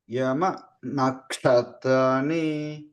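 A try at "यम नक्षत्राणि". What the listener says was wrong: యమ పైకి అంటున్నారండి మధ్యకి చెప్పాలి అది యమ నక్షత్రాణి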